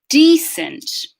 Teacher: All right, so starting with decent, we're going to hear the stress pattern on the first syllable with a tense vowel at the front of the mouth